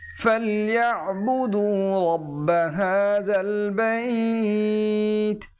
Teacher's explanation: এখানে যে আইনটি গলার ভিতরে একটু চাপ দিয়ে উচ্চারণ করতে হবে